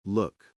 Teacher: the vowel is short and sort of in the back of your throat.